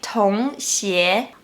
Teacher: you can see the woman pronouncing /ü/ like /i/. She wanted to say “同學”, but she pronounced it like “同鞋”.